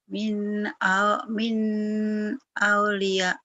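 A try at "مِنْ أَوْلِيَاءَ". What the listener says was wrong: ya, aunya jangan kaget, jangan ragu ya. Min au gelap, au. Min dari aulia ambia sholihin ya. Min aulia, min aulia.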